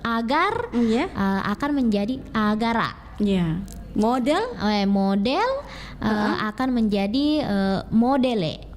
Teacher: Jadi ada penambahan vokal yang dimana vokalnya ini menyesuaikan dengan vokal yang berada pada suku kata terakhir dari bahasa Indonesia itu.